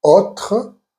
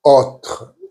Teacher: As you can hear, I'm not saying autre, I'm saying autre. So the O is more open.